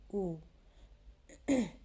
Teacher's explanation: उ ओष्ठ्य वर्ण है। जब हम उ बोलते हैं तो हमारे दोनों ओष्ठ एक दूसरे को स्पर्श करते हैं